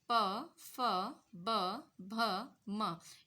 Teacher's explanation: इनका उच्चारण हम ओष्ठ की सहायता यानी होठों के सहायता से करते हैं.